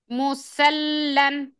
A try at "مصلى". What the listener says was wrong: سواد موٹا، لام باریک. مسلن.